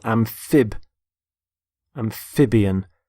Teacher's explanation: Notice the stress on the middle syllable.